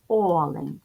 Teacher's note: звуки і тому два склади ділимо о лень ставимо наголос олень називаємо приголосні звуки л - твердий нь м'який тому що після букви н стоїть м'який знак який пом'якшує попередній